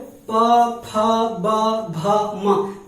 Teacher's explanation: पा देखना, आप बोल करके देखो, प फ ब भ म, बगैर दोनों होठों को टच किए आप पा नहीं बोल सकते हो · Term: ओष्ठ